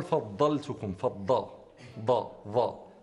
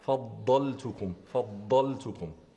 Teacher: يجب ان تكون خالصه ضاد من مخرجها وليس تكون يعني تخالطها نوع من الظاء الضاد باستطاله ومخرج ميز من الضاء وكلها تجي كلنا ومخرجه الضاد